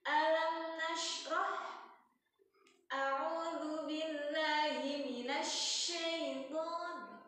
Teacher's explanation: Shinnya yang titik 3 keluarin anginnya karena dia punya sifat tafashi, berhamburan.